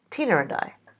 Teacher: For Tina and I, we might have the intrusive r to help us say this more easily.